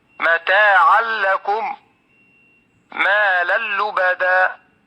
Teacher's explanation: jadi pada contoh bacaan Idgham bilagunnah bacaan tidak disertai dengan guna makanya namanya idgham bilagunnah di Laguna itu tanpa guna membacanya dengan